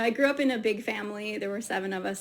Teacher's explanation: grew up, family, and seven with a stress to emphasize the key words